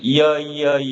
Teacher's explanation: 야라는 모음은 이에서 시작해서 아로 끝나요. · 이 야는 턱이 점점 아래로 움직이면서 나는 이중 모음이 되겠습니다